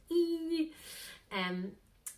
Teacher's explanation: 'ee' tends to be really narrow